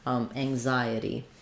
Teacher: We have the same ang sounds that we had in anxious, but it's unstressed here, so it'll be faster.